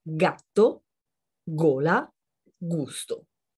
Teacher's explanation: Vediamo i primi tre suoni quando la lettera G incontra A, O, U. Questi sono dei suoni, c'est un son guttural, dei suoni gutturali, dei suoni duri.